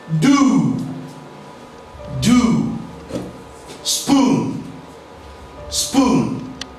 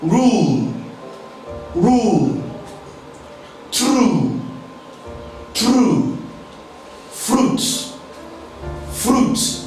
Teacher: Yes, this is a long form of oo sound. The sound is articulated with the back of the tongue raised to a high, just below closed position, while the lips are rounded.